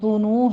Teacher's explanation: ذال نرمی سے پڑھنا بغیر سیٹی کی آواز کی، اور ہونٹوں کو گول کر کے ادا کیجئے۔